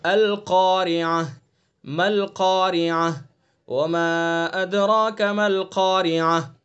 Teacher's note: ہاں وقف بالابدال، گول تا ہے، گول تا کو ہم ہائے ساکنہ سے بدل لیں، یعنی ایسی ہاں جس کے اوپر سکون ہو اس سے ہم بدل رہے ہیں